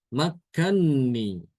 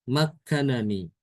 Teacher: ini dibaca dengan mengidghamkan nun ke nun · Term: idgham kabir